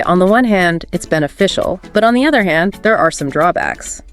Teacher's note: that slight rise and fall on those contrasting phrases shows you can think critically it adds that extra layer of nuance exactly and using Rising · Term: balance intonation